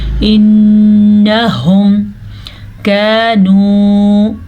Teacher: انہم پھر سے نون پہ غنہ ہو رہا ہے کیونکہ نون پہ شد آ گئی ہے. ہا کے تلفظ کا دھیان رکھنا ہے کیونکہ یہ ہا حلق کے آخری حصے سے نکلتا ہے.